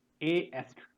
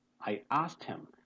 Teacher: K and E both are silent, and T is being pronounced